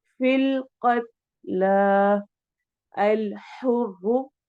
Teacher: را تو ہم یہاں پہ موٹا پڑھیں گے ضمہ پیش کی وجہ سے